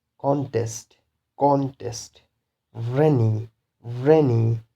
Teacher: So the stress, primary stress should be on the first syllable.